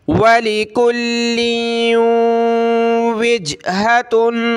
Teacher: ये तनवीन है, तनवीन कलरफुल है, इस पे हमने इख्फा करना है, नाक में आवाज़ पैदा करेंगे।